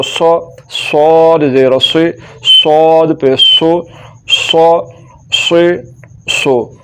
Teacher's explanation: صاد کو پڑھتے ہوئے سیٹی کی آواز بھی ہے اور صاد کو پر بھی کر کے پڑھنا ہے